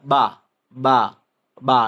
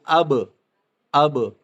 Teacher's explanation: यह दोनों होंठों की तरी हिस्से में मिलाने से अदा होता है